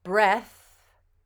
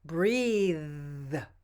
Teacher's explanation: the voiced th is exactly the same as the voiceless th except that we make a humming sound in our throat as we say it